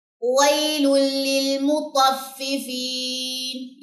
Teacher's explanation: اور یہاں پہ ادغام بلا غنہ، یعنی کہ یہاں پہ ہم نے غنہ نہیں کرنا کیونکہ تنوین کے بعد لام آ گیا